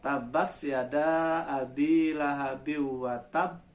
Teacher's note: Huruf ba ini huruf qalqalah. Ba-nya bertasdid. Maka watab ini qalqalah yang paling berat pantulannya.